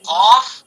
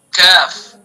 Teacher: قاف کا مخرج زبان کی جڑ اور اس کے مقابل اوپر کا تالو، اور کاف کا مخرج زبان کی جڑ سے کچھ اوپر کا حصہ اور اس کے مقابل اوپر کا تالو. قاف کاف.